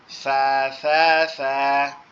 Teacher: সা কিন্তু আমাদের জিহ্বার আগা উপরের 2 দাঁতের আগার সঙ্গে লাগবে